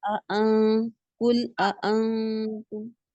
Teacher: दोनों हमजा को तहकीक से पढ़ेंगे और दाखिल भी करेंगे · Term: तहकीक माय दखाल